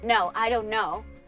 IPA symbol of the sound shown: noʊ